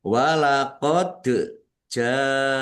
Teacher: dal sukun bacaan qalqalah dibaca memantul. Jim fathah alif mad thobi'i.